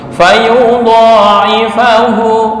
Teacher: Kepanjangan hanya 2 harokat atau 1 alif.